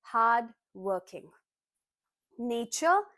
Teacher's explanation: Generally as per Indian English accent we do not pronounce the Rs here. So you are going to pronounce it as hard no R working no R again.